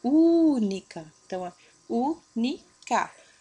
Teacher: a sílaba tônica é a antepenúltima sempre de trás para frente bom e depois frase frase mais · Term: proparoxítona